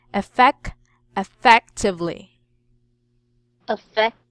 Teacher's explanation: The second syllable, the stress must be on the second syllable.